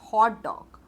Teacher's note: दोनों syllable पे stress है, हॉट पे भी और डॉग पे भी। सो दोनों syllable पे स्ट्रेस्ड है, so it is the words with both the syllable stressed.